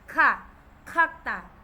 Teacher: ang unang double consonant sounds k pa rin pero mas tense kumpara sa Literal na k kasi yung Literal na k soft po yon Okay the next